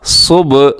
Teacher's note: صاد موٹا بھی ہے اور با قلقلہ ہے